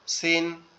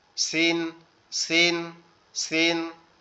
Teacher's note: সিন হচ্ছে শিরশির বা পাতলা আওয়াজ হবে